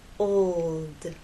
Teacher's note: L sound you must keep it pressed against that bump and there should be vibration the whole time from the old to the l and finally into the d old it's important to make the L long enough so that